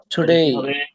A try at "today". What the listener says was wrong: টু না ভাইয়া, টু না